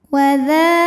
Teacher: Wadza dza hukumnya mad thobi'i muqaddar. Sebab dzal barisnya fathah panjang. Maka dzal panjang dua harakat.